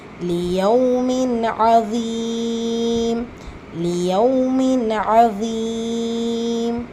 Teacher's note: லாம் கெஸ்ரா லி லியவ் மின் தன்வீனை தொடர்ந்து லெட்டர் ஐன் இருக்கு சோ இது இத்ஹார் உள்ளதை உள்ள மாதிரி ஓதணும் குன்னா செய்யக்கூடாது